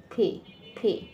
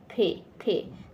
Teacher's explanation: দুইটা ঠোঁট একসঙ্গে যুক্ত থাকবে, তারপর আস্তে করে ঠোঁট দুইটা হয়ে যাবে, বাতাস ছেড়ে দিয়ে